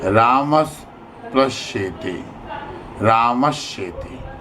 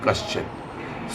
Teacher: यदि स या त वर्ग त थ द ध न के पहले या बाद में श या च वर्ग च छ झ ज च आवे तो दंत्य स के स्थान पर तालव्य श तथा त वर्ग के स्थान पर च वर्ग हो जाता है। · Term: सचुत्व संधि